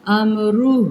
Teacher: را پہ پیش آ رہی ہے، اس کو پر پڑھیں گے